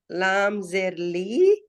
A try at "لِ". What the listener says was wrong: لی. لی آپ کھینچتے ہیں ان کو، کھینچنا نہیں ہے.